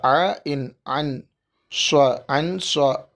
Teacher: அன் ஸ்வ அன் அதாவது நூன் சாக்கினுக்கு அடுத்து சவாது இவு எழுத்து இருப்பதால் இந்த அன் என்பதை அ என்று ஒரு அலிப் அளவு மூக்கில் மறைத்து ஓத வேண்டும். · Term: இபா